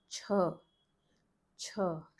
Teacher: Aspiration is there, her sound is there from the throat, and if you place your palm in front of your mouth, you would notice there's a puff of air thrown on the hand.